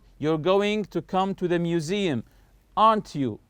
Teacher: in the tag your voice will rise up the intonation will go up · When I say aren't you, notice my voice is going higher here. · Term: Rising intonation